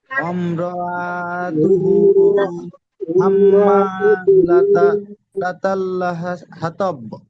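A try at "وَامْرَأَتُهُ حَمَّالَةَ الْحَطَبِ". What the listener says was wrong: ওম র আ বলে টান দিচ্ছেন, হামজার উপরে যাবার আছে, টান হবে না। ওম র আতুহু, বলেন।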